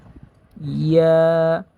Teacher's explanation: ইয়াটা হচ্ছে 6 নাম্বার মাখরাজ থেকে উচ্চারণ হয় জিহ্বার মধ্যখান তার বরাবর উপরে তালুর সঙ্গে লাগাইয়া, যেমন ইয়া।